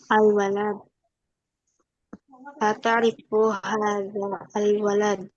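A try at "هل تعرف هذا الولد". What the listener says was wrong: Digabung aja ya, disambung aja. Hal ta'rifu hadzal walad.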